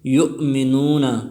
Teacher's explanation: منون میں واو مدہ ہے، وہ ساکن سے پہلے پیش آئے ہیں تو اس کو بھی ایک الف کی مقدار کھینچ کر پڑھیں گے